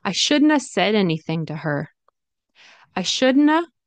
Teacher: Shouldn't, should not have, shouldn't have, could not have, couldn't have, would not have, wouldn't have. Okay. It turns into shouldn'ta, couldn'ta, wouldn'ta.